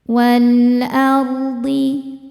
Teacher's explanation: Karena alif lam menghadapi huruf qamariyah yaitu hamzah ya, maka lam dibaca jelas. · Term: alif lam qamariyah